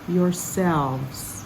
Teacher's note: kind of a z sound and the emphasis is on selves